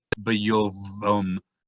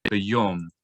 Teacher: We would say bayom. The v sound of the vav just totally goes away because the vowel o is on top.